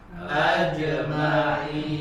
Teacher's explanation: Huruf innya dibaca panjang, situ mad arid li sukun sampai boleh 2, 4 ataupun 6 harokat. Ya, kemudian huruf ainnya sempurnakan ajma'in.